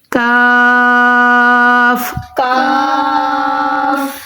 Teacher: یہ جو کشف والا کاف ہے، یہ ہم نے زبان کی جڑ اور تالو کے سخت حصہ سے ادا کرنا ہے